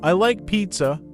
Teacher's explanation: when you make a statement your voice usually goes down